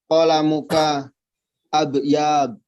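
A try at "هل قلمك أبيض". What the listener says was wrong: Abyadu. Enggak panjang ya. Abyadu.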